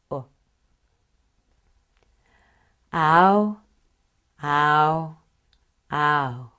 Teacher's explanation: Your jaw will move a lot too. The lips move from relaxed with the first vowel, ah, to rounded with the second vowel. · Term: ow sound